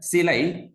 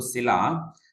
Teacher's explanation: So that is the Tamil word ending with I changed into A in Malayalam language.